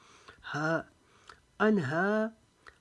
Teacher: हा की आवाज़ हलक के नीचे से निकालेंगे जैसे इंसान तकलीफ़ के वक्त आवाज़ निकालता है। हा अनहा, हा को अलिफ जितना लंबा करेंगे।